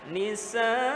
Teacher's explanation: Harus nyata hamzahnya di ujung, bukan nisa.